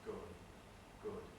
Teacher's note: So we can say that silence smears into voicing. We get this initial and final tendency to devoice.